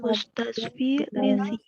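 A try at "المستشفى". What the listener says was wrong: Ya, ini enggak ada titiknya, bukan ya ya ini. Alif itu ya. Atau alif bengkok. Orang kita biasanya nyebut alif bengkok.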